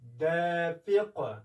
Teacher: وګورئ دافق نه وایو، فق، یعنې د قاف توری موږ خوځوو، ټکان ورکوو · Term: لویه قلقله